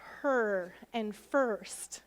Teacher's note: what happens in words like her and first yeah it's actually a vowel and it's an R controlled vowel that R sound kind of robs the vowel sound and it